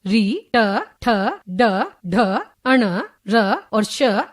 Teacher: जिन वर्णों के उच्चारण में जीभ मूर्धा दांतों के ऊपर खुरदरा स्थान को स्पर्श करती है वे मूर्धन्य वर्ण कहलाते हैं।